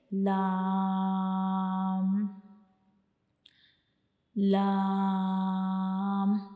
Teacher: हमारी ज़बान का जो किनारा होता है वो हमारे ऊपर वाले सामने वाले जो दो दांत होते हैं उनके अंदर वाली साइड पे जो मसूड़े होते हैं उनको टच करता है, उनसे जा मिलता है, तो तब हम लाम को अदा करते हैं। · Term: लाम का मखरज